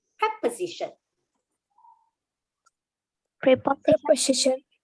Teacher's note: And the s, because it's between an o and an I vowels, it becomes the z sound.